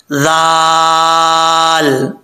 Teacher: जुबान का सिरा ऊपर वाले दांतों के किनारे से, अंदरूनी किनारे से लगे तो लाल पढ़ा जाता है बगैर सीटी के